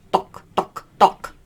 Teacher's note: when you enunciate duh, you're using the back of your tongue, not the tip of your tongue